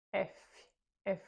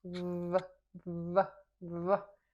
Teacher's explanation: Mesma posição, sem som com som.